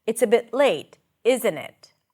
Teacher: It's not open for discussion really when I use this falling intonation.